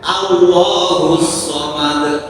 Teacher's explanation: Allah itu panjangnya hanya dua harakat ya.